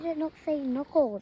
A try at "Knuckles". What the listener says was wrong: It starts with a silent K. Knuckles. Knuckles. You don't really say the K, it's a silent letter. No, it's just, it is there, but you can't really hear it.